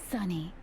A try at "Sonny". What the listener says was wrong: No, Sonny, not Sunny. Just think Sony, but with an extra N.